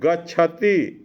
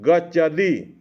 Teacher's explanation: दो स्वरों के मध्य आने वाला त शब्द जो है वह द में बदल गया